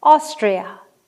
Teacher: And a dactyl, which is the opposite of an anapest, stressed, unstressed, unstressed